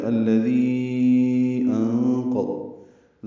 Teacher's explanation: ذی یا مدہ اور اس کے بعد حمزہ آنے کی وجہ سے مد منفصل ، الذی انقض، ذال کو لمبا کریں گے، 4 حرکات، انقض